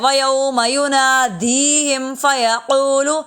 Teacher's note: دی کو اس لیے لمبا کر رہے ہیں کیونکہ یائے ساکن سے پہلے اگر زیر ہو تو وہ یائے مدہ ہوتی ہے ، اور یائے مدہ کو ایک الف کے برابر لمبا کرتے